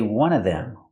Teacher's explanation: I can say one of them, pronounce everything, one of them, or I can eliminate the v sound in of